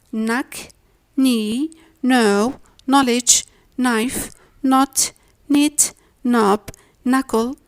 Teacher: It seems that there is a great misunderstanding between the nasal sounds and the stop ones. K is a stop sound, N is a nasal one. Whenever these two occur together, the stop sound K leaves room for the nasal N. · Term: silent